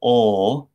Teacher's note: this velarized L sound, ol, often in many languages becomes a w sound